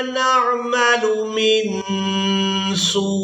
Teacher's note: सीन को वाव मद्दा के साथ मिलाते हुए खींचना है, और खींचने के बाद हमने हमज़ा साकिन के साथ मिलाना है